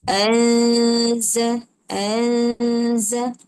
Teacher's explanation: Dengung tu panjang sikit.